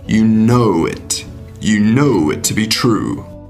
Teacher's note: darth vader puts stress on the word no you know and links know and it together